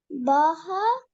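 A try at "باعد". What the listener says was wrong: This is ayn, not ha. Ba ayn dal.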